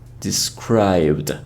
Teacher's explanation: So for these verbs, the last sound will omit the pronunciation of the letter E when we turn them into past. So although we write it like describe it, the E sound is omitted. So we should say described. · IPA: /dɪsˈkraɪbd/